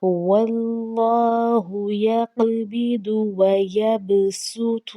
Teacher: ہم اس میں دیکھتے ہیں کہ جو صاد کے اوپر سین لکھا آیا ہے تو اس صورت میں ہم نے صاد نہیں پڑھنا بلکہ ہم نے صرف سین پڑھنا ہے سیٹی کی آواز کے ساتھ